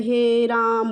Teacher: ह्रस्व स्वर की अपेक्षा तिगुना समय लगे। ठीक है, ह्रस्व स्वर से 3 गुना समय लगे। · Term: फ्लुत